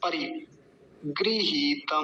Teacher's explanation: परि में रेफ पर जो इकार है वो ह्रस्व है छोटा है तो जल्दी बोला जाएगा